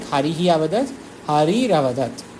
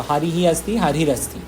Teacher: If those three are following, then, or swara, tritiya, chaturtha, panchama, in that way, if swara is following, then visarga will just become ra